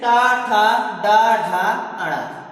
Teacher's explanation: इसके बाद है मूर्धा, मतलब ऐसे वर्ण जिनका उच्चारण करते समय हमारी जीवा मूर्धा को स्पर्श करती है वह मूर्धा से उच्चारित होते हैं